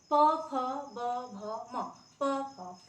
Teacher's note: ये होठ होठ को टच कर रहे हैं दोनों तब हम लोग इसका उच्चारण कर पा रहे तो ये आपका